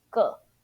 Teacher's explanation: as a measure word meaning, you pronounce neutral tone or fifth tone, 个, instead of 个, okay, is 个.